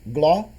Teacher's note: O ouvido pode nos enganar e deixar passar despercebido que aquele I e aquele A do final de glória é um ditongo. Né? Como se fosse um hiato, como se ali acontecesse um hiato entre o I e o A.